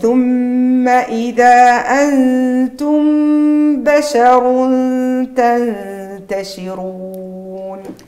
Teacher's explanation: عندي الراء هنا مفخمه لانها متحركه بالضم